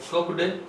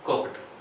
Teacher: ये कुक डे नहीं होता है, ये क्या होता है कुक टे होता है, क्योंकि आपको बताया था मैंने कि कोई भी वर्ब है उसके जब ईडी सफिक्स लग जाता है प्रत्यय के रूप में और जब वो सेकंड और थर्ड फॉर्म बन जाती है तब वो टे उच्चारण होता है कुक्ड।